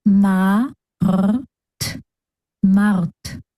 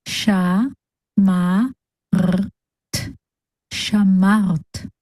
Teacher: The base sound of reish is r, like when gargling water at the back of your mouth